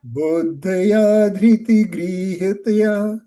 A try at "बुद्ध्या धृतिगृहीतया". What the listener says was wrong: Buddhaya, you're saying. Dha is half. Buddhya.